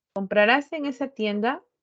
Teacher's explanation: la directa total tiene una entonación ascendente